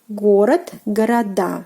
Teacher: And pay attention to the stress position, город, города. So the stress falls on the last syllable, which is the ending of a plural form